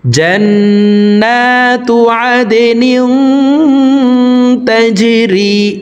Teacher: দাল কলকলার হরফ নিচের দিকে ধাবিত করে ধাক্কা দিয়ে উচ্চারণ করব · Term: জিম কলকলার হরফ